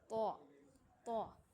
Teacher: طا میں جو آواز ہے وہ آواز منہ بھر کر اور موٹا کر کے ادا کرتے ہیں اس کو، طا طا۔